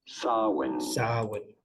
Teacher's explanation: stress on the first syllable, the sa syllable